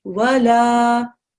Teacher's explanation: instead of me reading wala, I have to read wala for 2 seconds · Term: alif madda